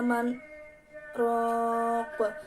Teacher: bacaan saktah yaitu berhenti sejenak tanpa bernafas panjang satu alif